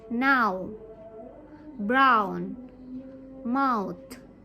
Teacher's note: mouth will start on the position of the eye sound and allow your mouth and lip to close as you finish on the position of the u or u sound